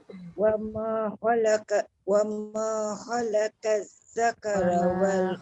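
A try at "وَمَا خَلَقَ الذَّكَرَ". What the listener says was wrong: Khalaqal qaf tebal zal nipis. Khalaqal zakara wal. Dia tak jadi qaf, dia jadi kaf. Khalaqat kan. Qazza. Tengok mulut saya. Wa ma khalaqazza. Qazza. Qaf mesti tebal.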